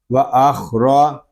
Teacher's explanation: خا یہ حروف مستعلیہ میں سے ہے، اس کو پر پڑھیں گے، اور خا یہ حلق کے اوپر والے حصے سے ادا ہوگا